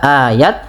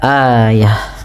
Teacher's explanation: Kemudian pada lafal ta yang di sini ayah apabila ada ta suku, maaf ta marbutah berada di akhir bacaan huruf tanya-nya kita ganti kita rubah menjadi huruf ha yang dimatikan maka tidak lagi dibaca ayat tapi dibaca ayah. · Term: tak marbutah